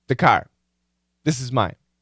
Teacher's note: We start speaking as our mouth is closed. So we never hear that TH. We never really hear that full TH.